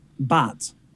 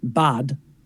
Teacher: you don't really have any voice at the end or you have very little